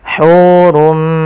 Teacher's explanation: Asalnya hurun bertemu dengan mim, tanwinnya masuk kepada huruf mim dan diganti bunyinya menjadi bunyi mim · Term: idgham bi gunnah